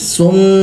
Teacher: تو کہیں گے سین میم پیش سم، میم الف مد زبر ما، تو چونکہ میم پر تشدید ہے تو یہاں پر غنہ بھی کریں گے، ناک میں آواز پیدا کریں گے، جس طرح نون پر تشدید ہوتی ہے تو غنہ کرتے ہیں، ناک میں آواز پیدا کرتے ہیں۔